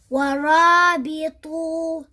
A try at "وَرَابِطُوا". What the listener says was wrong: So we don't say وَرَابِطُوا wa, like some people. They think that you need to stretch this waw because there's an alif after it. No, this alif is just there to show you that this waw is waw al-jama'a. Nothing else. وَرَابِطُوا.